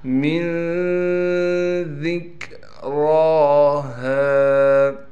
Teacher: نون پر بھی غنّہ کیا جائے گا، ذال کو باریک کر کے نرم کر کے پڑھنا ہے، ذال کو کاف سے ملائیں گے، پھر را پر کڑا زبر ہونے کی وجہ سے را کو ایک الف کی مقدار کھینچیں گے، اسی طریقے سے ہا کو بھی ایک الف کی مقدار کھینچنا ہے۔